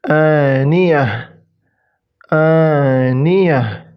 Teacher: Jadi ta marbutah berubah menjadi ha sukun.